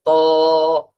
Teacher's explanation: ত এর উচ্চারণটা জিহ্বার আগা সামনের উপরের দুই দাঁতের গোড়ার সঙ্গে লাগিয়ে ত।